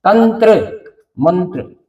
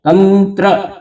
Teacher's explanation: ये त के ऊपर जो बिंदी है तंत्र ये बिंदी न का उच्चारण करेगी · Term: अनुस्वार